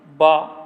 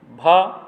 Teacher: घोष में बा अल्पप्राण है, भा महाप्राण है,